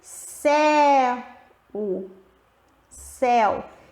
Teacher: o E é a vogal, é mais forte, e a semivogal é o U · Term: ditongo decrescente